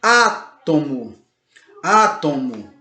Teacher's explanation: Percebe como a antepenúltima sílaba é mais forte?